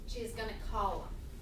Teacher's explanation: call them might turn into something like column. Yeah, we drop the TH sound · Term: reduction